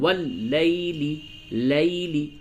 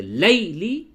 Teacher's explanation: واو اور یا ساکن سے پہلے جب بھی زبر ہو تو وہ دونوں واو اور یا حرف لین ہو جاتے ہیں، اور اس وقت اس کی ادائیگی بہت ہی نرم آواز سے کرتے ہیں. واللیلی لیلی، لی نہیں کہیں گے، لیلی یہ غلط ہو گیا، دھیان دیں.